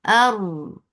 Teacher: hamza is sharp, attached with ra, ra will be heavy because there is fatha before it. And get the right makhraj of ra, which will get little takrar.